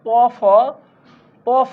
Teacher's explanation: বর্গের প্রথম দুইটা বর্ণ হচ্ছে অঘোষ